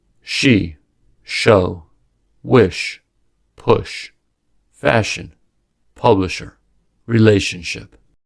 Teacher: The sh sound, sha, is unvoiced and is the counterpart to the voiced ja. Both are fricatives. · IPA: /ʃ/